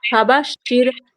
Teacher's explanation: ফাবাশশিরহুম বিআযাবিন, ফা জবর ফা এর উপর জবরকে তাড়াতাড়ি পড়া, মুটি না টানা, মারুফ পড়া, ফা জবর ফা, বা শিন জবর বাশ, ফাবাশ, শিন র জের শির, র সাকিনের পূর্বে জের থাকলে রকে বারিক করে পড়তে হবে।